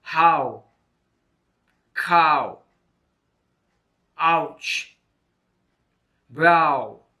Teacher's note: Ow is a diphthong made by the combination of a and u. The mouth is wide open. The tongue position is at the back side of the mouth.